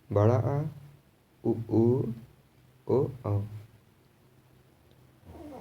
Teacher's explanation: पश्च स्वर है बड़ा आ, उ, ओ, औ